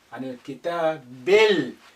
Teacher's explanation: The lam retains its sukun because the kaf is a moon letter, it's not a sun letter.